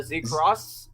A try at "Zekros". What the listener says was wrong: Zekros. Yeah, friggin' Bill being like it's Z-Cross, like it's Zekros. Zekros. You have to say it like one word.